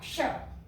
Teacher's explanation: तो इसका जो उच्चारण स्थान होगा वो क्या होगा, कंठ और मूर्धा, क्ष, क्योंकि क का उच्चारण स्थान कंठ है, श का उच्चारण स्थान मूर्धा है, तो क्ष का उच्चारण स्थान कंठ और मूर्धा हो जाएगा